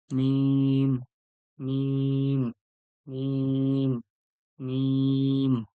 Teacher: লাম লাম এরপরে দেখুন মিম মিম মিমটা হচ্ছে মিম যে বলবেন দুটো ঠোঁটের ভিজে অংশ দুটো ঠোঁট একসঙ্গে লেগে যাবে লেগে গিয়ে বলবেন মিম মিম মিম মিম এরপরে দেখুন ওয়াও ওয়াও